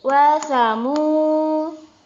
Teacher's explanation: mu ini dibaca panjang 2 harokat